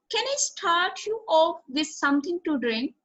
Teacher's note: since this is a yes no question the intonation rises at the end